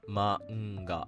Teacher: n turns into a nasal sound similar to the word sing in English.